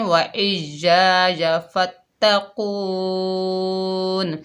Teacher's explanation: وقف کی حالت میں نون کی زیر ختم ہو گئی اور نون ساکنہ ہو گئی · آ جاتا ہے تو مد بنتی ہے مد عارض لی سکون، اس مد کو 2، 2.5 اور 5 الف کی مقدار تک کھینچ کر پڑھ سکتے ہیں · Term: وقف بالاسکان